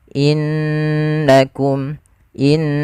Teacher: harusnya ditahan dulu. innakum in sambil dimasukkan ke rongga hidung kita. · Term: bacaan ghunah